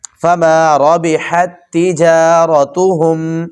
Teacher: فما ربحت، جی یہ پہلے تا کے اوپر دیکھیں ساکن ہے اور دوسرا تا جو ہے وہ اس کے اوپر مشدد ہے، شد ہے. تو پہلے تا کو نہیں پڑھنا ہم نے، ہا کو آگے والے تا کے ساتھ ملا دیں